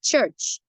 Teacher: the affricate at the beginning and at the end of the word church, which is composed of a T and J